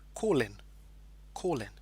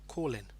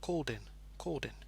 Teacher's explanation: the consonant L and the next word begins with a vowel I so because of that there's kind of a linking sound okay it almost becomes like one word okay call in call